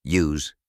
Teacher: En la palabra youth se puede escuchar un diptongo que combina el sonido I con el sonido U.